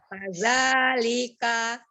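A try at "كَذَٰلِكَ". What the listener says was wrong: Kadzalika. Kazanya masih terbaca za nih. Kaza, masih kaza. Kaza, zaza, ujung lidahnya ada di seri bagian atas. Kaza. Jangan terlalu ditekan ya. Zal itu sifatnya rogoa, lembut. Kadzalika.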